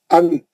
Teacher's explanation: नून जो है जबान की नोक मसड़ों को लगाए तो निकलता। · नून को क्लियर पढ़ना, बिल्कुल वाज़ेह पढ़ना। नून को खींचना नहीं, लंबा नहीं करना, नून का गुन्ना नहीं करना। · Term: इजहार